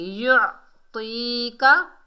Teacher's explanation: आइन को हलक के दरमियान से अदा करेंगे, आइन यानी हलक को प्रेस करेंगे, दबा कर पढ़ेंगे